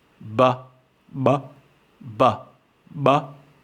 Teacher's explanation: the glottis is depressed which means air flows into the mouth and creates this characteristic buh sound but-but-but-but implosive sounds are very rare and difficult for our English